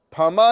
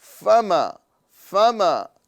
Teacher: فما کے اندر میں فا نیچے والے ہونٹوں کی تری اور اوپر کے دانتوں کے سرے سے فا ادا ہوتا ہے فا. تو یہاں پر ہم فا ادا کریں گے نہ کہ پھا یہ ہندی والا ورڈ ہے اور فا یہ عربی والا ورڈ ہے. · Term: حرف فا